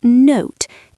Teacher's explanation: The O sound. In London, we say note. It is round.